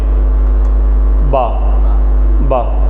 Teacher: اور اسی کے اپوزٹ با، یہ جو با ہے، ٹھیک ہے، میری طرف دیکھیں، بعد میں ڈسکشن کے، با کے لیے ہونٹوں کا اندر کا گیلا حصہ، تر حصہ، ان سائڈ ہونٹوں کی جو ہے وہ، آپ اگر با پڑھیں تو ہونٹ آپس میں چپکتے ہیں، با با، ٹھیک ہے، ایزی ہے۔